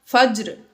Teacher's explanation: جیم بھی حروف قلقلہ میں سے ہے، ساکن ہے، تو اس میں ہم نے قلقلہ ظاہر کیا